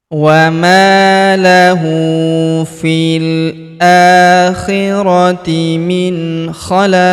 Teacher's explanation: Dan huruf pemberhentian huruf qin tanwin in kita sukunkan. Dan karena dia sukun maka kita pantulkan atau kita qalqalahkan.